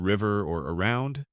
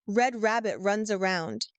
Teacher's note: Another tough one is the R sound, like in river or around. It's not rolled, it's not sharp, it's kind of soft and deep.